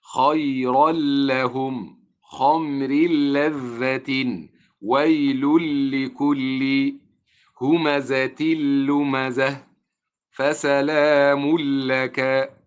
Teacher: فيدخل التنوين في اللام ويدغم فيه إدغاما كاملا فلا أسمع له صوتا ولا أسمع للغنة صوتا